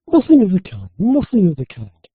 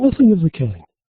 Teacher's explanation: typically with a falling tone